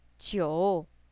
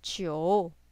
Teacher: Number 9. A falling rising tone.